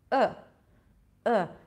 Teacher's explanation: it's reduced to this really neutral vowel sound